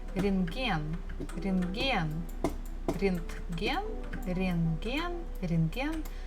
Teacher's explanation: there's a bukva T in the middle of the word, but actually we don't have to pronounce it.